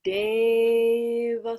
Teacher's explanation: Again, tongue between the teeth for the da, not an English da.